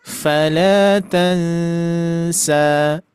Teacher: Hati-hati di huruf ikhfanya, tidak sedikit menebal tapi tipis.